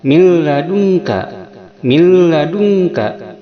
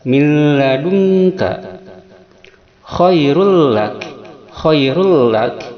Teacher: idgham bila gunnah yaitu memasukkan tanpa dengungan